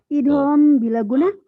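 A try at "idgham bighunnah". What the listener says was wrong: Bukan bila, bukan bila, biguna.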